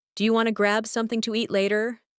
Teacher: Do you want to becomes do you wanna